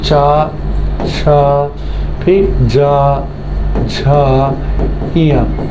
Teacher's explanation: उनका उच्चारण तालु से होता है, जिस कारण इन्हें तालुव्य ध्वनि कहते हैं